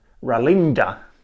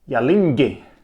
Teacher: So at the end we have different vowels. In the beginning we have a rhotic sound in one case and a glide / half vowel in the other.